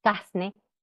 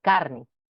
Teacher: cambio de la r por s decir casne por carne